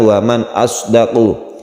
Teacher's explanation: salah satu huruf halqi itu adalah hamzah yang ada di tenggorokan, bunyinya a.